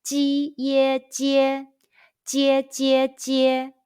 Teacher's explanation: Let's combine the initial ji, the final ye, and the high pitched first tone all together.